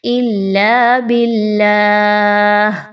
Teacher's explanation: اللہ کے حرف کو باریک پڑھیں گے، موٹا نہیں پڑھنا